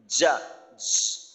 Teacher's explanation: আমাদের সমস্যা হয় জিম যখন আমরা উচ্চারণ করি তখন একটা ঘর্ষণের আওয়াজ হয়, অর্থাৎ জিহ্বার মধ্যখান বা জিহ্বার যে অংশটাই লাগাই না কেন, উপরের তালুর সাথে লাগে, এটা শক্তভাবে লাগে না।